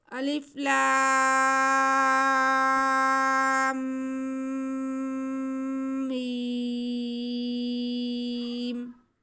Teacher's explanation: لام کو پڑھتے ہوئے ہم منہ کو بند کریں گے، ہونٹوں کو، اور غنہ کریں گے، پھر ہم میم ادا کریں گے